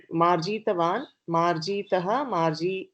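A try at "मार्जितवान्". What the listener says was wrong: Don't do dirgha of ikara. Read it again.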